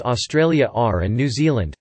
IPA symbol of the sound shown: r